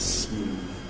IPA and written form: smuːv (smooth)